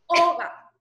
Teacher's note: porque la voz, el tono mayor está en la O, Oga, y no es la última vocal.